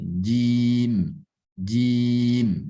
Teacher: huruf dal di sini bukan huruf yang bersifat hamas, tetapi dia sifat jahar. Dalam artian tidak banyak angin yang keluar, tidak banyak nafas yang keluar.